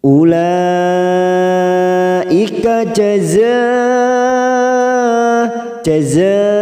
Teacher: Hamzah dalam satu kalimat namanya bacaan mad wajib muttasil mad wajib muttasil ini bisa dipanjangkan antara empat atau lima harakat tetapi kita harus konsisten memilih salah satu Biasanya kita memilih empat